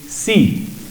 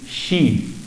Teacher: de dos maneras y las dos están perfectamente correctas una opción es pronunciar la S como s y decir sí la otra opción es el mismo sonido que en inglés se representa por la sh y decir She